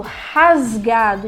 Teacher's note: E o som é quase como se tivesse o nosso RR aqui, ele é suave, como se a gente estivesse assoprando, rasgado, entendeu?